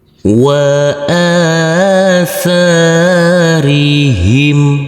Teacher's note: Huruf alif huruf tsa kita baca panjang dengan panjang dua harakat. Karena huruf alif ini di atasnya ada huruf alif kecil yang berdiri tegak lurus.